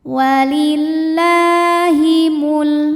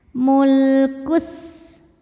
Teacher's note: Kemudian lam sukunnya dibunyikan secara jelas namanya lam mutlak